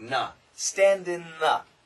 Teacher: The N can cancel the TH.